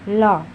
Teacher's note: जिसके उच्चारण में जीभ का अगला भाग मसूड़े को छूता है और वायु मुंह के दोनों बगल से होकर बाहर निकलती है। हिंदी में ल ध्वनि पार्श्विक ध्वनि है, याद रखिएगा।